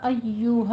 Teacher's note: مد منفصل جائز ہے، ایہا کو اپنے یا کی آواز پہ سختی کرنی ہے پر شین یا جیم نہیں بنانا